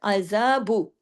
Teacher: با پیش بو، اب اس کو بو کو زیادہ لمبا نہیں کھینچنا